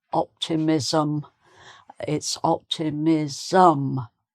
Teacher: you have to put an extra little vowel sound in to get the um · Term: extra syllable